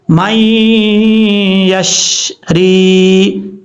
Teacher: یا ساکن سے پہلے یہ را کے نیچے زیر ہے تو اس کا مطلب یا ساکن سے پہلے زیر ہو تو یا مدہ ہوتا ہے، ایک الف کی مقدار لمبا کر کے پڑھیں گے۔ یا مدہ کا مطلب ایک الف کی مقدار لمبا کیا جائے گا یا کو۔